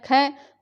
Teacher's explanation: महाप्राण जिनमें श्वास की मात्रा अधिक लगानी पड़ती है